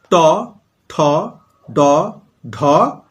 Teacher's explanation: জিভটা কিন্তু একটু উল্টে গিয়ে মূর্ধাকে অর্থাৎ মাড়ির দিকটাকে স্পর্শ করছে, আমরা মাড়ি বলি ভিতরের দিকটা। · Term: মূর্ধন্য